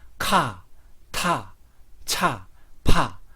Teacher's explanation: 앞뒤에 있는 기역, 디귿, 지읒, 비읍이 히읗과 연결되어서 입에서 바람을 강하게 만드는 발음입니다. 격음화로 나오는 발음은 네 가지밖에 없습니다.